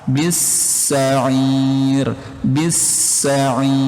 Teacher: Nah, bis-sa alif lam syamsyah teman-teman. Alif lam yang enggak kebaca, langsung bi ini masuk ke huruf sa.